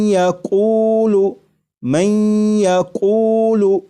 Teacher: یہاں پر دیکھیے گا یہ نون ساکن ہے، نون ساکن کے بعد جب یا آ جائے تو نون ساکن کو یا میں ادغام کر کے پڑھیں گے، ملا کر پڑھیں گے، اور نون ساکن کو یا میں ادغام اس طرح کریں گے کہ غنہ بھی ہو